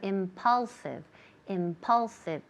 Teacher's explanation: Impulsive, la segunda recae, ahí es donde recae el acento, el énfasis